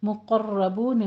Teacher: मुक़र्रबून, क़ाफ भी पुर है, रॉ भी पुर है। आगे बून में मदारिस वक्फ़ी करनी है।